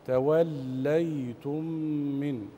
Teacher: توليتم من، والإدغام مثلين صغير، توليتم ميم، ميم ساكنة بعدها ميم متحركة، تغني مقدار حركتين